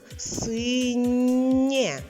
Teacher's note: наша літера є поділилася м'якістю Із звуком н перетворився на нь став м'яким приголосним позначаємо двома рисочками а літера є залишила собі лише голосну частинку